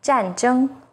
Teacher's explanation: ZH sounds like the first sound in jerky, with the tip of the tongue raised against the hard palate